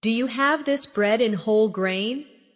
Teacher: In connected speech, do you becomes dia